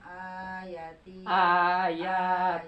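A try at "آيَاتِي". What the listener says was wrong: panjang. lagi panjang. Ayati mad.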